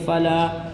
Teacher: الف مدہ کو ایک الف کے برابر کھینچتے ہیں ، اس لام کو ایک الف کھینچیں گے، فلا، اس عین